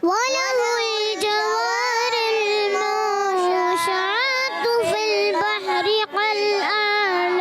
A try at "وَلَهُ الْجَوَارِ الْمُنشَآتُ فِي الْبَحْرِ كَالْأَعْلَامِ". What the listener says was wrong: اچھا یہاں تھا کیا تھا؟ اخفا تھا. اور اخفا کی معنی ہے چھپانا. نون میں غنہ کرتے ہیں, ایک الف کا غنہ بھی کرتے ہیں. تو یہاں غنہ تھوڑا سا کمزور ہوا ہے, تو کمزور نہیں ہونا چاہیے, پورا ہونا چاہیے.